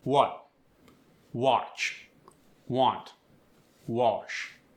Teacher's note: A words like what, watch, want, wash get an aw sound like AW.